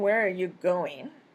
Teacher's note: Has basic intonation with going, receiving the most stress or focus in the sentence.